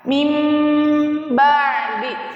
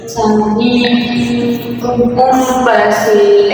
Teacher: nun sukun bertemu dengan huruf ba, maka dibacanya mim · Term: iqlab